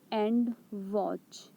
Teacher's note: and is unstressed and watch is stressed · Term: iambic feet